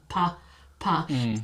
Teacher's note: the unvoiced p and then moving into voice